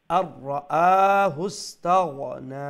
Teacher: হামজা powerful এবং ওয়ান আলিফ long standing ফাতহা আছে standing জবর